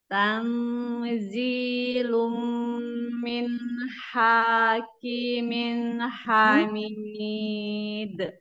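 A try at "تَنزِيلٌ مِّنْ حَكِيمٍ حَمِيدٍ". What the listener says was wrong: Hanya tidak pendek, hakim.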